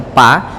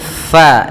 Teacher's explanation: Mad thi'i yaitu fathah bertemu Alif faidza hati-hati dalam lafal Fa Jangan dibaca pa tapi FA alirkan nafas kita